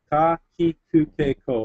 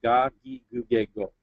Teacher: it's changing it from a non-voice to a voice sound, so from a ka to a ga.